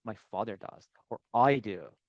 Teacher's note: the tonic stress on my father does